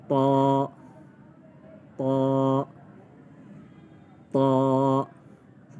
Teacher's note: اس میں جو عموماً غلطی کی جاتی ہے اس کی ادائیگی میں، وہ ہونٹوں کو گول کیا جاتا ہے۔ اس کی ادائیگی میں ہونٹوں کو گول نہیں کریں گے، زبان کو اوپر تالو سے چپکائیں گے اور موٹا پڑھیں گے۔